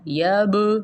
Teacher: یہاں پہ دیکھیں با ساکن آ رہا ہے تو یہاں پہ ہم قلقلہ کرتے ہیں. لا یب نہیں ہوگا، یب یہ والی ساؤنڈ آنی چاہیے.